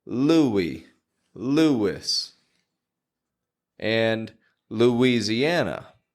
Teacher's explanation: there's no W in the spelling, my friend, but we are pronouncing a W every time.